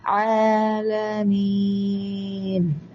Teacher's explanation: ഐനാണ് തൊണ്ടയുടെ മധ്യത്തിൽ നിന്ന് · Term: ഐൻ